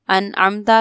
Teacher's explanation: انعمتا میں نون ساکن کے بعد عین حروف حلقی میں سے ہے تو اظہار ہوگا